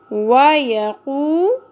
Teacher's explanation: next آپ دیکھیے قاف پیش کے ساتھ واو مدہ، واو مدہ ہے یہاں پر، واو مدہ کو ایک الف کے برابر کھینچا جائے گا